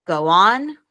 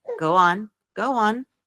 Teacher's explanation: So go on, we'll add a W sound. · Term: Linking